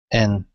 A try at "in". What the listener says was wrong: Not N, but in. In.